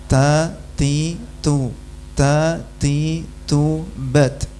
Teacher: Ketika sukun desisnya sama dengan pas hidup. Jadi antara hidupnya dan matinya sama saja.